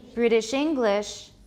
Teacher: It's an adjective, so we say British English. English is stressed.